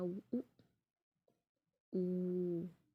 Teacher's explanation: जिनके उच्चारण में होठ गोलाकार होते हैं, गोल हो जाते हैं, सर्कल बन जाता है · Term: वृत्तमुखी